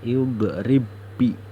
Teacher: Kita bacanya harus idrib bi, seolah-olah kita membaca ada tasjid. Ba yang pertama ini dihilangkan, seolah-olah kita membaca tasjid.